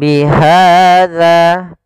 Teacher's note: pada lafal ha ada fathah bertemu alif, yaitu mad tabi'i, panjangnya 2 harokat